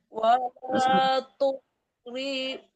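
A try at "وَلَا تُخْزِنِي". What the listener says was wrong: Betul Zai Bu. Bukan rini tapi zini.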